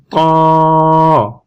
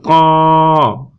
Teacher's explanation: ত একটু পোড় হবে, ঠিক আছে, বারিক না, পোড় হবে, পোড় হয়ে উচ্চারণ হবে ত। ত একটু জিহ্বার আগা সামনের দিকে মাড়ির দাঁতের সাথে লেগে যাবে, লেগে উচ্চারণ হবে, একটু শক্ত হবে, উচ্চারণ হবে ত। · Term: কলকলা হরফ ত